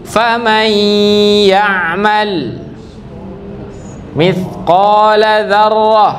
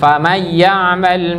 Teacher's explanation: Famai kasih dengung 2 harokat. Tidak langsung masuk famai ya'mal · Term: idgham bi gunnah